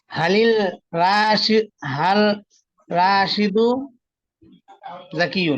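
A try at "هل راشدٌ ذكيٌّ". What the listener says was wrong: এক পেশ কেন হবে? এক পেশ কেন হবে? হ্যাঁ অবশ্যই।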